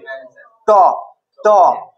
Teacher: ট উচ্চারণ করবি জীবটা উল্টে যাবে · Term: মূর্ধন্য